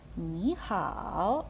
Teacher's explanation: у нас перший склад змінюється на другий тон